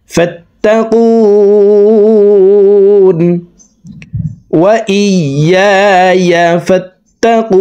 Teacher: তিন আলিফ টেনে নুনকে সাকিন করে ফেলবো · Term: মধ্য আরজি